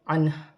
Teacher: ہا پر پیش کی حرکت ہے، وقف کی صورت میں پیش گر جائے گی اور ہا ساکن ہو جائے گی